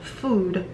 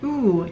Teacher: food which has one back vowel oo